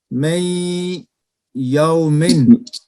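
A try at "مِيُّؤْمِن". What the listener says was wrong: می یومن، می یومن، میں نہیں اچھا، میم کے نیچے زیر ہے، می یومن، یعنی مکمل یا نہیں بنتا نون۔ اچھا،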